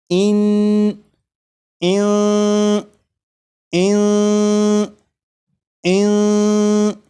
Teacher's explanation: نون ساکن کی جو آواز ہوگی وہ ناک میں چھپ جائے گی، اس طرح کی اس میں غنہ بھی ہوگا